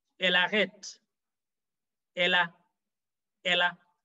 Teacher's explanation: The L, the E disappears in pronunciation. The L marries the A at the beginning of arrête. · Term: enchaînement